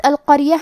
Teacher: کلمت القریہ میں قاف کی ادائیگی زبان کے جڑ اور تالو کے نرم حصے سے ہے. قاف حروف تفخیم میں سے ہے تو ہم یہ حرف کو موٹی آواز میں پڑھیں گے